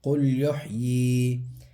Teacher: قاف لام پیش قل، یا ہا پیش یح، قل یح، یا زیر ی، یا ساکن سے پہلے یا کے نیچے زیر ہے، تھوڑا سا کھینچ کے پڑھیں گے